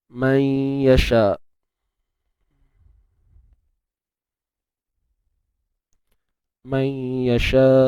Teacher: kita memasukkan bunyi nun ke dalam ya tetapi bukan secara keseluruhan. Okey, ataupun dalam bahasa mudahnya kita kata kita hanya mengabaikan makhraj nun. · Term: idgham bi gunnah